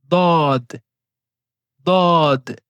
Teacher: Pour prononcer cette lettre, nous devons mettre les côtés de la langue en contact avec les molaires. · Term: la lettre ضاد